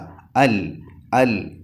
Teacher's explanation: ലാം നാവിന്റെ തലമേലെ മുൻപല്ലിന്റെ ഊനിൽ തട്ടിച്ചു കൊണ്ടാണ് ലാം ഉച്ചരിക്കേണ്ടത് ഒരിക്കലും പല്ലിൽ തട്ടാൻ പാടില്ല അൽ അൽ അത് കഴിഞ്ഞാൽ മൂന്നാമത്തെ അക്ഷരം ഹാ